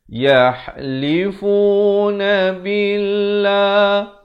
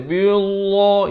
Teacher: Lafaz jalalah di sini dibaca nipis. Jangan baca billah, itu tebal.